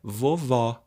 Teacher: o vovó é com acento agudo porque o som é aberto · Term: som aberto